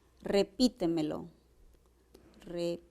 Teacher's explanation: tienen mínimo 4 sílabas y la mayor fuerza de voz recae en la trasantepenúltima sílaba. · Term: sobresdrújulas